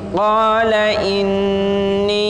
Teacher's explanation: Qala inni, itu panjangnya, ni-nya itu panjangnya 4 sampai 5 harokat.